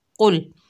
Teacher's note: बारीक काफ पढ़ते हैं कुल, तो इसे कुल नहीं पढ़ना, इसे कुल यानी मोटा काफ पढ़ना है